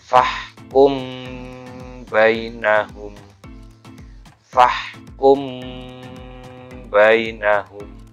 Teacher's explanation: jadi ada gunanya ada dengungnya yang keluar sedikit nafas dari hidung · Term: gunnah